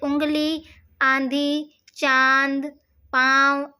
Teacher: ऐसे स्वर नाक से बोले जाने के कारण अनुनासिक कहलाते हैं।